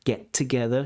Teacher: That first T disappears.